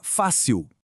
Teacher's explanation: a força tá no fá, a penúltima é paroxítona e termina com L.